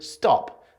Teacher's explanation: pronounced a little bit like the T in the word stop and that is to say without a puff of air coming after it